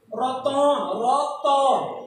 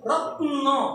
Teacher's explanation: যেমন দেখো, তোমরা খুব ভালো করে খেয়াল করো, আমি যখন রত্ন থেকে রতন বলছি, রতন রত, এ ত, ত এর পর একটা অ আসে, খেয়াল করে কিনা দেখো, রতন রতন রত্ন, এখানে ত এবং ন এই দুটির মাঝখানে কোনো স্বরধ্বনি নেই